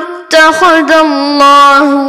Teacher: আল্লাহ শব্দের ডানে জবর আসার কারণে আমরা আল্লাহ শব্দকে পুর করে পড়ব অর্থাৎ মোটা করে পড়ব, এবং খাড়া জবর আসার কারণে আমরা এক আলিফ টান দিয়ে পড়ব।